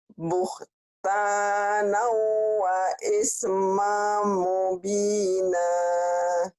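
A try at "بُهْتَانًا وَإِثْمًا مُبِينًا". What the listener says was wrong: Mamnya kurang nyambar. Buh. Iya, buhtanau wa ismam mubina. Ya, jangan mubinah ya, mubina.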